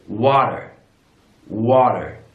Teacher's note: In American English, that T becomes a D sound